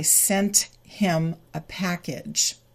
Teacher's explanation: the him reduces to im. Step number 2, the T from sent moves to the I, and we get sent him. · Now in this case, the final T is not deleted.